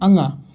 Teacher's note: सघोष अल्प प्राण नासिक की बात करेंगे तो अंगा आ जाएगा